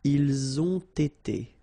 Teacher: You get first the liaison z and then you get the t.